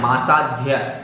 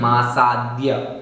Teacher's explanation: धा नहीं पढ़ना है, मासाध्य ऐसा नहीं, मासाद्य, दा और या मिलकर के तो मासाद्य